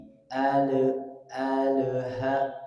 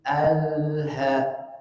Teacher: alirkan sedikit suaranya Alha Alha tidak ada tapi Alha Kenapa karena lam itu punya sifat tawasut atau bayiniah yang dia mengalir suaranya